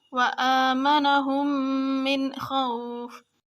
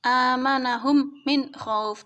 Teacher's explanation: jadi ketika huruf mim mati bertemu mim itu bacanya ditahan 2 harokat